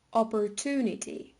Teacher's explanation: there is also rhoticity. The approximant is pronounced after the schwa.